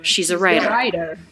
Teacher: it comes between two vowel sounds so it's not a true t but rather a flap of the tongue